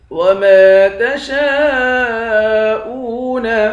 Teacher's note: شین کے بعد الف ہے، الف پر مد ہے، اس مد کو 5 الف کے مقدار کھینچ کر پڑھیں گے